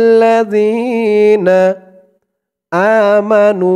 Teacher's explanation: জালের উচ্চারণটা একদম নরম পাতলা করতে হবে জিহ্বার মাথা উপরের দাঁতের মাথার সাথে লাগবে